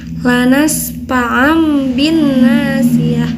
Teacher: Iqlab itu tadi yang sudah dijelaskan bahwa ketika ada nun sukun atau tanwin bertemu dengan huruf ba, itu akan berubah menjadi mim ya. Jadi bunyinya itu jadi mim.